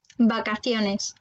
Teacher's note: on a la lettre V qui va se prononcer comme B